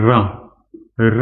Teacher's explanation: र बोलेंगे तो आपकी जीभ है ना वो रगड़ खाती है, बहुत तेज कंपन करती है, इसके बाद आवाज निकलती है। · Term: लंठित व्यंजन